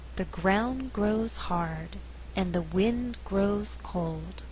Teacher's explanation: In this slower reading, all content words are stressed. They are ground, grows, hard, wind, grows, cold.